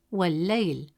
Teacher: Adding waw before al-layl skips the alif hamza sound. Instead of saying wa al-layl, you say wal-layl, moving smoothly from wa to layl. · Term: Hamzat al-Wasl